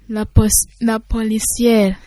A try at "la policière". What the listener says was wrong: Très bien, applaudissez.